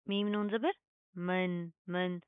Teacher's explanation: तो यहाँ पर सिंपल इजहार होगा, हम नून के आवाज़ को जाहिर करेंगे, यहाँ पर हमने कोई इख्फा कोई गुन्ना नहीं करना